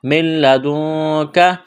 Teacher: نون ساکن کے بعد کاف ہے، حروف اخفا ہے، غنہ کریں گے، آواز ناک میں چھپائیں گے